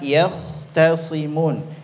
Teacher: Contohnya kalimat yahtasimun, ya-nya tipis, kha-nya tebal.